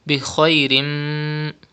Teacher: Bi khairim, pronounce kha with thicker voice because it is from mustaliya letters. And you can see mim yarmaloon letter after tanween after two zir. The rule idgham will be done and gunna will be done.